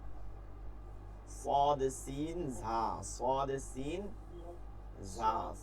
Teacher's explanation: জিহ্বার আগা সামনের নিচের দুই দাঁতের আগার সঙ্গে, গোড়ার সঙ্গে না, গোড়ার সঙ্গে নাই কোনো, আগার সঙ্গে লাগিয়ে صاد سين ঝা صاد سين ঝা صاد سين ঝা صاد سين ঝা। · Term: সদ সিন জাল